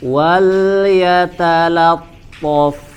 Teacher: Wal yatalattaf. Lamnya dibaca tipis ya, wal bukan wal ya, tidak dibaca tebal